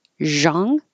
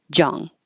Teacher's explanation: pronounce it with a zh, zhang, or with a j, jong